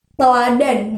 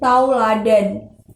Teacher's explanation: perubahan bunyi vokal tunggal atau monoton menjadi bunyi vokal diftong secara berurutan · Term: diftongisasi